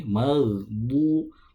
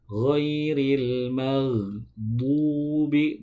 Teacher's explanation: dari sisi lidah bertemu dengan gigi geraham, bisa bagian kiri, bisa bagian kanan. Yang paling mudah itu biasanya gigi geraham bagian kiri. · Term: huruf bo